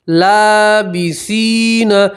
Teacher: تا کے ساتھ یا مدہ، اس لیے یا مدہ میں بھی آپ ایک الف کے برابر کھینچ کر پڑھیں گے۔